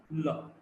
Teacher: The tongue is placed laterally, and when the air flows from both the sides, we've got the lateral approximant.